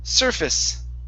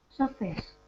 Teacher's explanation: The stress is at the very beginning